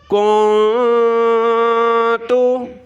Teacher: تو یہاں ہم نے گنگنانا ہے، ناک میں آواز چھپانی ہے ایک الف کی مقدار۔